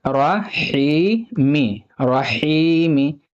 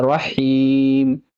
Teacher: मीम के नीचे ज़ेर है, लेकिन अगर आप यहाँ पे रुकना चाहते हैं तो ज़ेर की जगह साकिन हो जाएगा, यानी मीम पर जज्म हो जाएगा।